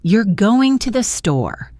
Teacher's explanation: Voice goes up at the end.